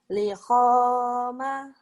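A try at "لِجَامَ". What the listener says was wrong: Lijama. Titiknya di bawah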